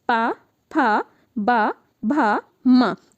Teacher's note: इनको हम लोग ओठ की सहायता से बोल रहे हैं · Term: ओष्ठ